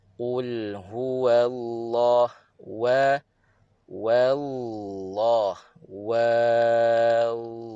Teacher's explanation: yang tebalnya pada Allah bukan pada Wa eh wau ini Mudah terpengaruh sebab selepasnya itu tebal kalimat Allah · jadi kena pastikan eh pastikan wau di sini nipis